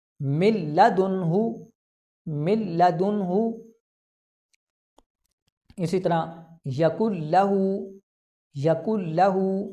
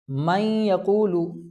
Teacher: नून साकिन के बाद लाम है तो यहाँ पर गुन्ना नहीं होगा, बल्कि हम इसको बग़ैर गुन्ना के पढ़ेंगे।